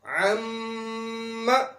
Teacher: میم کے اوپر شد ہے، اس لیے میم کی آواز کو مدہ کی مقدار کے برابر ناک میں لے جایا جائے گا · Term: غنہ